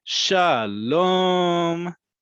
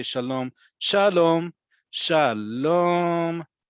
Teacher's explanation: shalom, that really drawn out second syllable, is like hello